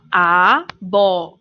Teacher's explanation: o bó é a antepenúltima sílaba e é a sílaba tônica. Portanto, quando a sílaba tônica for a antepenúltima, nós devemos classificar como proparoxítona.